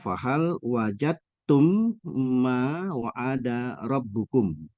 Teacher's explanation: ketemu dengan ta berharakat domah dibaca fahal wajadum Ma wa'ada rabbukum huruf dalnya dilebur ke ta jadi tidak disebutkan